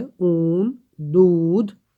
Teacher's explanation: ऊंच ठाव से, जीभ ऊंचा उठा हुआ रहता है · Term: समृद्ध पस स्वर